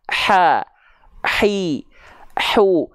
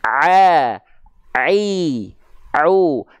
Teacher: Bedanya kalau ha kecil dia keluar nafas, kalau ain dia tanpa nafas. Kalau ha kecil nama sifatnya hams, kalau ain nama sifatnya adalah jahr.